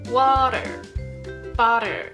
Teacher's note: T▁が▁D▁に変わってしまう▁Flap▁T